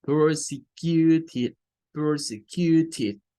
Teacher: Entonces, como forma parte de los verbos regulares, el sonido para cuando es el pasado participio o el pasado de ese verbo y cuando es el adjetivo, siempre es el mismo y va a sonar a id